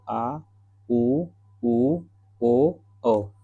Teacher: जिन स्वरों के उच्चारण में जीवा का पिछला भाग सक्रिय रहता है, उसे क्या कहते हैं? पश्च स्वर।